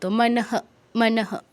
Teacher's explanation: বিসর্গের পরে কিছুই নেই তাই বিসর্গের উচ্চারণ হবে পূর্ণ হ এর মত